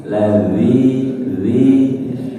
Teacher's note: ujung lidah menyentuh ujung gigi seri atas